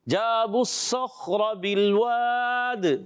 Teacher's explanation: خا میں قلقلہ کر دیتے ہیں، قلقلہ نہیں کرنا